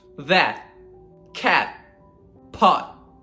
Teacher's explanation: we're going to stop. That's why it's called stop T. We're not going to aspirate it. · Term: held T